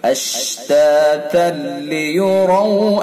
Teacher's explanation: لیکن تنوین کا ادغام کریں گے لام کے اندر اور تنوین کو مکمل بدل دیں گے. اشتاتا لیروا اعمالهم، را کو پر کر کے پڑھیں گے. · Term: ادغام تام